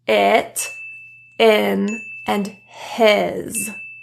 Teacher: The jaw is slightly closed for this sound as well. The tongue is slightly lower and relaxed than the E, but not so low that it sounds like eh. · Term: lax vowel